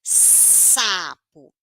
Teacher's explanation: língua alveolar porque a língua tá encostando ali atrás dos dentes